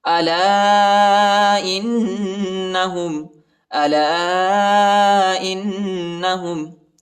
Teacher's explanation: الف پر چھوٹا مد آیا ہے، اس کو تقریباً 2-3 سیکنڈ تک کھینچنا ہے، اور نون پر غنہ بھی کرنا ہے، کیونکہ نون پر شد آیا ہے۔ الا انہم، الا انہم ہم المفسدون، یہ ہائے، ٹھیک ہے، اس